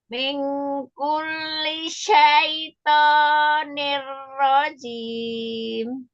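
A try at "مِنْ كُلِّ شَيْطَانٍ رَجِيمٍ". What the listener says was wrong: Ini benar nggak dengung. Tapi ini wajib dengung. Kurang panjang banget. Kurang panjangnya.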